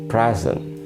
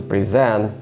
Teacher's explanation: the noun has its word stress on the first syllable, and with the verb, the stress falls on the second syllable